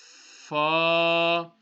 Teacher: How you're going to read the fa is the top teeth will touch the bottom lips.